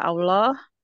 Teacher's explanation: karena sebelumnya adalah fathah jadi dibaca dengan tebal